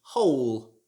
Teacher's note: it should not be pronounced with the w like whole or whole it should just be hole like the